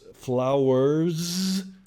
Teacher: So don't be thrown off by the fact that flowers has more of a Z and not a S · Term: Z sound